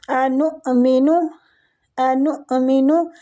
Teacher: حمزہ ہے نون کے اوپر تو اس کو جھٹکا دے کے پڑھیں گے